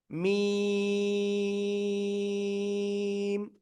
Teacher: এই যে মিম অক্ষরটা দুই ঠোঁটের শুকনো জায়গা বাইরের অংশ থেকে আপনার উচ্চারণ করতে হবে চার আলিফ টানিয়া